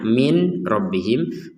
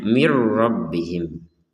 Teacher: masukkan Nun ini kepada huruf ro tanpa ada dengungan